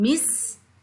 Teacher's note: سین کو ہم سیٹی کے ساتھ ادا کرتے ہیں. یعنی جب ہم سین کو پڑھتے ہیں تو ہمارے منہ سے سیٹی کی آواز کی طرح اس کی ادائیگی ہونی چاہیے.